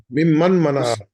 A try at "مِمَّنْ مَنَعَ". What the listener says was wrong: نہیں نون نہیں بولا گا، میم میم سے ملے گا نہیں،